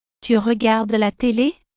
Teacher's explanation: This is an informal way to ask a question by raising the pitch at the end of the sentence. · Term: rising pitch